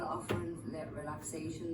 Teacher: the ing changed to an n